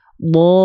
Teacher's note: Waladdallin. Nah, ketika masuk ke l ditekan, jangan ditahan. Ditekan seolah nadanya lebih naik. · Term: nabar